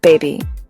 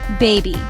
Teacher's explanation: It has two syllables. The stress is on first syllable.